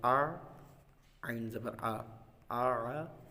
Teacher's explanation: عین جو ہے وہ حلق کے درمیان والے حصے سے ادا ہوتا ہے، ہا اور عین حلق کے درمیان والے حصے سے ادا ہوتے ہیں۔